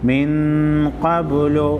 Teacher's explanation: नून साकिन को गुन्ना करेंगे, क़ाफ को मोटा पढ़ेंगे और बा पर बा को हिला कर पढ़ेंगे।